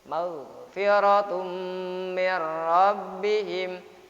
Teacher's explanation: Tanwin berjumpa dengan mim dibaca idgham biguna ya.